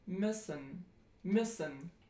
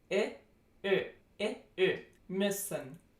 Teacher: that is pronounced if you just take I and then you round your lips. I, Ö, müssen.